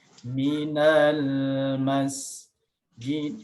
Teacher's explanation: Nah, minal ma nggak boleh minal lemma, nggak boleh dihidupkan karena alif lam qamariyah, dia harus dijelaskan lamnya